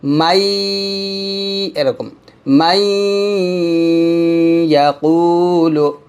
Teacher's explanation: যেমন মিম ইয়া জবর মাই, ইয়া জবর ইয়া মাই, ইয়া কফ পেশ কু এক টান দিবেন, তাহলে হবে মাই ইয়াকুলু। তো এখানে মিমকে ইয়াকে ধরার সময় আমি একটু গুণনাটা আদায় করবো, মাই এরকম মাই ইয়াকুলু।